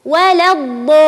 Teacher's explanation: ولا الضالين تمد ست حركات، فهو مد كلمي لازم مثقل. هذه الكلمة حتى في الصلاة، حتى في الصلاة يجب علي أن أمدها وأقول ولا الضالين بهذه الطريقة، بهذه الطريقة ولا الضالين.